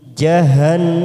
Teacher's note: Na ila fathah berdiri 2 harokat. Jahannam nun yang bertasdid kita tekan 3 ketuk, namanya bacaan gunna